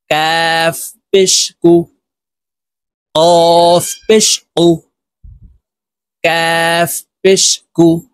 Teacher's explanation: কাফ হরফ জিহ্বার গোড়া থেকে একটু আগে বাড়াইয়া উচ্চারণ করতে হবে